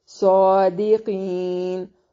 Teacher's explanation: قی یائے مدہ ہے اور قاف کو موٹا ادا کریں گے ، وقف کی صورت میں مد کر کے پڑھ سکتے ہیں،